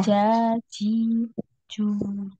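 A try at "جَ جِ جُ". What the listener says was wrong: Coba Ukti, Afwan, diletakkan ujung lidahnya di gigi bawah, ya, ujung lidahnya. Jadi yang naik itu tengah lidah ke langit-langit, ya. Ja, sampai nempel ya, tengah lidahnya itu sampai nempel di langit-langit. Nah, jadi langit-langitnya itu bagian yang dalam itu ya, ya. Ja, ja. Nah, ja, ji, ju. Jadi tidak ada suara desisnya.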